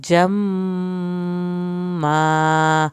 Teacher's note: جمّا پہ میم کی وجہ سے ہم نے زیادہ دیر لگائی ہے اور الف ساتھ پڑا جائے گا